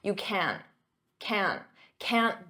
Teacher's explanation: In spoken English, I'm not going to pronounce that hard can't with the T.